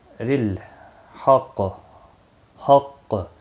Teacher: قاف ساکن ہوگا وقف کی صورت میں، اس پر قلقلہ بھی ہوگا